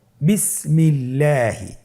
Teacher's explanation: আল্লাহ শব্দের দ্বিতীয় লামের আগে এখানে জের এসেছে, আপনারা জের দেখতে পাচ্ছেন। এই জন্যে আল্লাহ শব্দের দ্বিতীয় লামটিকে বারিক করে পাতলা করে পড়তে হবে